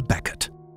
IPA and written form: ˈbɛkɪt (Beckett)